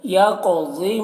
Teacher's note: قاف میں قلقلہ بھی کرنا ہے اور ضاد کو موٹا کر کے پڑھنا ہے